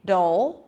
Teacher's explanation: it's a light D and then that dark L sound, dole. And the vowel before is really important because it's not bad.